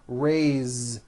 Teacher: even though it is spelled with an S, it's pronounced with a voiced Z.